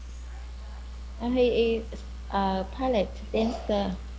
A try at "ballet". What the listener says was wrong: Ballet again. Ballet. No T sound, no.